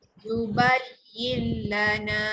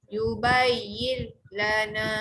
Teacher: Masuk terus bunyi lam. Tak panjang pun. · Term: Idgham bilahuna